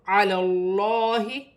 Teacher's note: لام کو لام کے ساتھ ملا کر پڑھا جائے گا اور یہ لام موٹی پڑھی جائے گی کیونکہ اللہ کی لام سے پہلے زبر آ رہی ہے تو علی اللہ، اور کھڑی زبر بھی ہے، 1 الف کی مقدار کھینچ کر بھی پڑھا جائے گا اور موٹا بھی پڑھا جائے گا۔